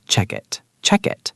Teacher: Check ends with a K sound. It starts with a vowel. So that becomes check it, check it.